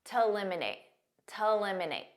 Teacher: a lot of native speakers will pronounce to when it's a preposition or part of the infinitive like it is here as a very unstressed T